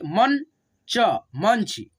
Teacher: म पे देखो अन की मात्रा है तो म के साथ में न का उच्चारण करेंगे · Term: अनुस्वार